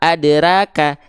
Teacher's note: huruf ro-nya berharokat fathah dibacanya dengan vokal O. · Karena huruf ro termasuk ke dalam huruf yang harus dibaca tebal ketika fathah.